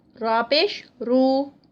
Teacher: را یہاں پہ موٹی پڑھی جائے گی، پیش کے ساتھ آ رہی ہے